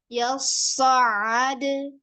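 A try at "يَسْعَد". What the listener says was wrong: Jadi dalnya kol-kolahnya jangan dibuang, jangan dihempas gitu loh, Kak. Ya, tapi didorong. Yes. Ada. Nah, bukan yes. Ada. Ada. Nah, nanti kol-kolahnya nggak sempurna. Yes. Ada.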